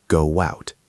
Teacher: Your mouth has to open wide to get from the round go to the open out. Your lips pass through a W shape. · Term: ghost W